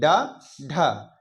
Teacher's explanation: पहले ये जबान हमारी ऊपर जाएगी और एकदम से झटके के साथ नीचे आएगी। ड ढ, एकदम झटके के साथ आएगी। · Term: उच्छिष्ट व्यंजन, उपक्षिप्त व्यंजन